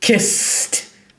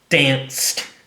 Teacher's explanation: because it's a voiceless consonant we get a t sound